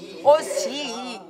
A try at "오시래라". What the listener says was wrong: 오시 하지 말고 오시래라 쭉 떨어져야 돼. 마나님 홀 오시래라 아시다.